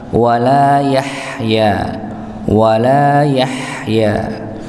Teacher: maka jangan lupa huruf ha-nya dialirkan